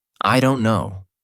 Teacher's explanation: stated flatly is neutral and matterof fact